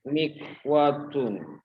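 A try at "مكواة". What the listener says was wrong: Mikwatun. Wa-nya banyak. Mikwatun.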